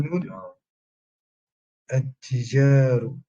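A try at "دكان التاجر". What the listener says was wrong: Dukkanu, attention là, c'est pas Tijar. Dukkanu, attaji. Attaji. Parce que là, en fait, c'est attajiru. Attajiru.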